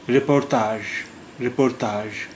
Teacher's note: اس میں بھی ژ کی آواز جی سے نکل رہی. جی کا جو تلفظ ہے یہاں پر وہ ژ کا ہے